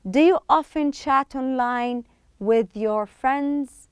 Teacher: This is how we pronounce do and you together as one word. We don't separate it.